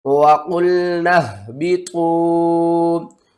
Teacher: ہا کو آپ نے حلق کے سب سے نیچے والے حصے سے ادا کرنا ہے